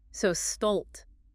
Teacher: It's a broader, more open vowel sound than the A in cat.